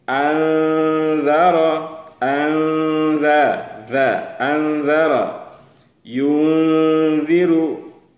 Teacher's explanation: bunyi nunnya samar ke dalam bunyi zal. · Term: ikhfa